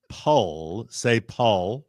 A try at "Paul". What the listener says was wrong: no, not pa. Say Paul and pronounce the L.